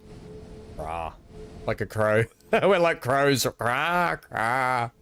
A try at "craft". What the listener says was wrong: You added silent W and then